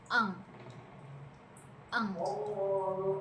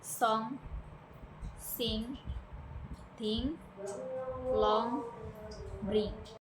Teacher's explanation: The back of your tongue touches the soft palate and air passes through your nose while using your vocal cords.